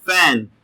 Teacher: the upper teeth and the bottom lip will touch together in this way and we need to produce the air flow from the mouth